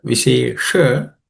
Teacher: So that sh, vishesha, the second letter is cerebral sh, so the tip of the tongue should point up